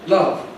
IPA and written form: lʌv (love)